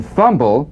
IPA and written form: ˈfʌmbl (fumble)